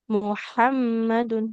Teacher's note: Huruf ha di tengah tenggorokannya.